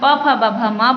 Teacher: जब हम प फ ब भ म बोलते हैं तो हमारे होंठ आपस में टकराते हैं, इसीलिए हम इसे कहते हैं ओष्ठ वर्ण।